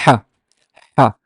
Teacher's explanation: a very pharyngeal sound that comes from your throat. It has no equivalent, but the closest I would approximate it to loud whispering, basically.